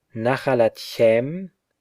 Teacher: chem, chen retain their aspirated pronunciation even after a shut syllable, contrary to chapter 6a.